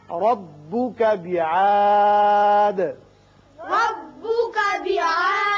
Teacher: بعاد الف نہیں نکالنا. یہاں وقت کی صورت میں دال ساکن ہو جائے گا اور اس کی صفت قلقلہ ادا کریں گے